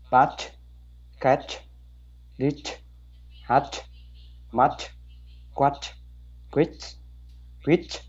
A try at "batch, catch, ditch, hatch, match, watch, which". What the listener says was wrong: Oh, Luan, your CH sound is good, but the sound of the vowel is gone. You have to say batch, catch, ditch, hatch, match, watch, which. Which. Which. Different from wish.